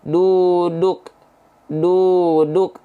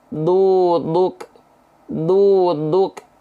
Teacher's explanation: Huruf D itu ujung lidahnya hanya dicentuhkan ke langit-langit saja, bukan ke pangkal gigi seri atas.